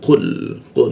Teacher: Nah, lalu qul huruf qu diikut tenggorokan lidahnya kita naikkan sehingga tidak ada hembusan udara ketika membaca qu